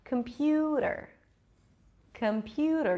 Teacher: pew is the primary stress so it's going to be longer and higher in Pitch · Schwa at the beginning, schwa at the end.